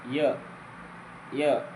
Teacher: ನಾಲಿಗೆ ಟಚ್ ಆಗಲ್ಲ ಅಲ್ಲೂ ಟಚ್ ಆಗಲ್ಲ ಯ ಇದು ಅಂಗಸ್ಪರ್ಶ ವ್ಯಂಜನವಲ್ಲ